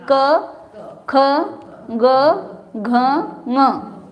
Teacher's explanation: के क ख ग घ म कंठ से निकलता है ना इसमें मुंह नहीं लगाना पड़ता है दांत नहीं लगाने पड़ते कुछ भी नहीं खाली कंठ ही खुला छोड़ो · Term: कंठ व्यंजन